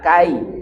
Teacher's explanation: Kaifa kamu bacanya lembut kai layin jangan kae